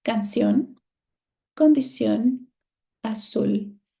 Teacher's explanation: In all of these words, my stressed syllable is on the last syllable. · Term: agudas